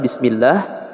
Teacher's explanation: Sin tipis ujung lidah dikenakan pada ujung gigi seri bawah